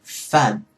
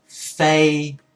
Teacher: Cái tiếng y cuối đó nó giúp cái tiếng nguyên âm chính giữa đó kéo dài ra hơn.